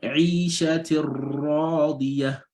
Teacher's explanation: although the kasratani have gunna sound, is a tanween, but because a ra coming after it, this will prevent the gunna from coming out